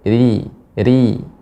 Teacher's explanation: Namun ketika kasrah maka ro dibaca dengan tipis. Ri pangkal lidah tidak naik.